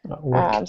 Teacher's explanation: with that past participle, the ed ending is going to sound like a T